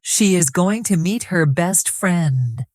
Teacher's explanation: The stressed words are going, meet, best, friend. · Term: sentence stress